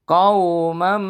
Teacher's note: Hukum bacaannya adalah idgham bigunah. Idgham bigunah itu dibaca mendengung. Mendengungnya lamanya ditahannya kurang lebih 3 detikan atau 3 ketukan.